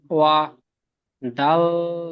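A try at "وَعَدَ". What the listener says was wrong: দাল দাল। দাল অক্ষরটি তিন আলিফ টান দিয়ে পড়েছিলেন, এখানেও তিন আলিফ টান দিয়ে পড়তে হবে।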